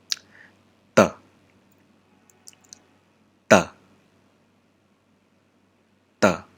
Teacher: Stop manner, and remember, no aspiration. And this consonant doesn't sound like the English T, but it sounds like the English TA.